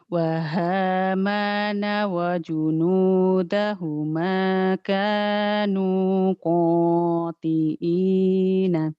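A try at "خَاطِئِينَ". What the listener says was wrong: Bukan qati'ina, khati'ina. Orang Jawa ketahuan nih.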